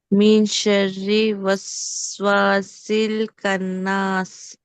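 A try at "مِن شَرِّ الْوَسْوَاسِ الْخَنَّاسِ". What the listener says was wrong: రా కింద కసరా తీసుకుని వెళ్ళి లామ్తో కలపండి, తర్వాత పదంలోని లామ్తో. మీ షర్రి చదివేటప్పుడు ఇక్కడ కూడా దీర్ఘం తీయండి. ఎందుకు తీయాలి అనేది తర్వాత క్లాసులో వచ్చే రూల్లో వస్తుంది. మీ షర్రిల్, షర్రిల్ రా కింద కసరా తీసుకుని వెళ్ళి దేంతో జాయిన్ చేస్తున్నాము? లామ్ మీద సుకూన్తో.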